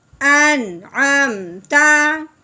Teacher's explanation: یہاں پہ اظہار کے ساتھ بغیر غنے کے پڑھیں گے